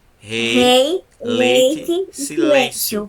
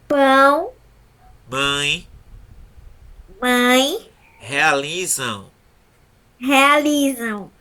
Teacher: na hora que você falou a palavra pão, mãe, realizam, o som saiu vibrando aqui no nariz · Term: nasal